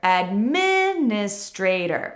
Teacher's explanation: we actually have a big stress on min and a secondary stress later in the word